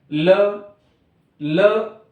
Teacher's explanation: ल कहते समय हमारी जीवा दांत को स्पर्श कर रही है। इस कारण ल का जो उच्चारण स्थान है वह है दांत यानी इन्हें दंत्य वर्ण भी कहा जाता है।